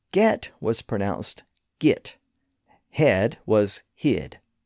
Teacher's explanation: Another linguistic feature shared by East Anglia and New England was a confusion of the short e and I sounds in many words.